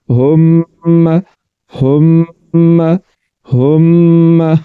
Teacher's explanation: تو یہاں پر غنہ کریں گے اواز کو ناک میں لے جا کر تھوڑا سا لمبا کریں گے کیسے ہم ہم ہم میں مشدد ہے دو مرتبہ پڑھا جائے